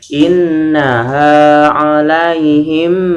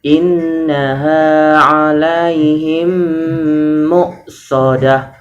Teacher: menyuarakan mim rangkap atau ditasydidkan dan wajib dibaca dengung, namanya idgham mimi atau idgham mutamasilan, ya.